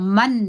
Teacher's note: اقلاب غونه څه ته وایي دا مو څلرم نمبر غونه ده اقلاب غونه وایي چې د نون اواز په میم ویل کېږي